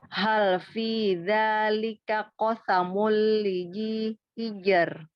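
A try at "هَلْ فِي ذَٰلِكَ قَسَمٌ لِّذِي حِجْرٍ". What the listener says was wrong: Lizi, tipiskan lagi huruf zal, keluarkan ujung lidahnya.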